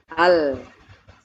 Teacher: lam ketika diucapkan suaranya tidak langsung keluar ke depan secara langsung karena lidah tertutup maka suaranya keluar dari sela-sela lidah dari pinggir kanan dan kiri · ujung lidahnya kan nempel ke atas ya ke langit-langit dekat ke Pangkal gigi ke gusi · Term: huruf lam